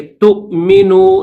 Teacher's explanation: تا کے بعد حمزہ کی آواز نکالیں گے ، تؤمنو، نیچے جو واو ہے اس واو کو نہیں پڑھیں